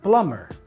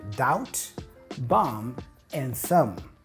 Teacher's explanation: the B is silent, which means it's not pronounced when you say the word. You just say plumber. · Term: silent B